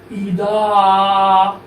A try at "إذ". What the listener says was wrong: এখানে জ তো দা না এটা গদ না এটা হলো জ ইজ